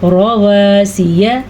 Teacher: را کو ہم نے پور پڑھا کیونکہ را کے اوپر زبر ہے. آپ کو معلوم ہوگا را کے اوپر زبر یا پیش ہو تو را پور پڑھتے ہیں، را کے نیچے زیر ہو تو را باریک پڑھی جاتی ہے.